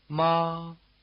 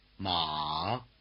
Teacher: The high tone is level as well as high, and the low tone is dipping as well as low.